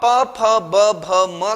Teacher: प फ ब भ म ये 5 के 5 वर्ण हमारे होठों से निकलते हैं, इसलिए कहा उपपद्मानीयानाम ओष्ठौ।